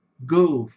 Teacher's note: E esse o não tem som de o, mas tem som de a.